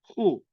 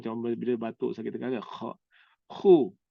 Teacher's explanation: As though we are going to throw out the phlegm. In our throat. Macam bila batuk sakit tengah.